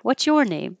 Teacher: I'm emphasizing your or chur or chore because I'm telling you mine, and now the emphasis is on you, yours.